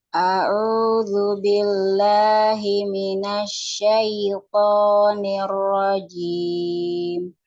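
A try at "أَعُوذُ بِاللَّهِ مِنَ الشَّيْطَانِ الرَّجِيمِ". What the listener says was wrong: Sempurnakan ain ya, tinggal huruf ainnya aja. A'udzu billahi minasyaitonir rajim.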